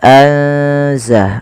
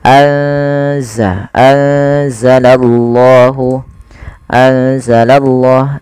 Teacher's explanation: salah satu huruf ikhfa yaitu huruf Zaid maka cara membacanya yaitu memasukkan nunnya atau menyamarkan nunnya kepada huruf z ya anza langsung kepada makhj daripada huruf z anza anzalallahu anzalallah